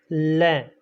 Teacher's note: जिस व्यंजन वर्ण का उच्चारण करते समय हवा जीभ की नोक के दोनों तरफ से बाहर निकलती है वह पार्श्विक व्यंजन वर्ण कहलाता है।